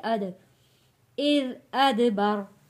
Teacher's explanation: کلا والقمر واللیل واللیل اذ ادبر اذ ادبر، یہاں پہ دال کو بہت نرمی کے ساتھ پڑھنا ہے اذ، اور دال کے اوپر جزم ہے، حروف قلقلہ ہے، آواز پلٹ کر آئے گی